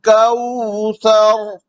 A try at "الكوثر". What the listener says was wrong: जी, क़ा में होंठ गोल नहीं होने चाहिए। इन्ना अअतैनाकल कौसर।